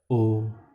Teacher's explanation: होंठ और कंठ से मिल के बनता है ओ। होंठ जब निकलेगा तो यहाँ से ये ओ तो ये खाल नीचे आएगी, ये ऊपर आएगा।